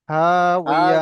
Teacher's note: লাস্টটা হা উচ্চারণ হবে মোটা, হা হাউইয়া।